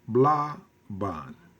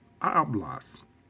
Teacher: the stress is on the next to the last syllable